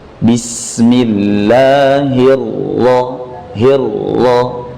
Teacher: Ra bertasydid dibaca tanpa mantulan.